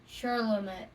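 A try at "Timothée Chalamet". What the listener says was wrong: I don't think there's an R. Chalamet.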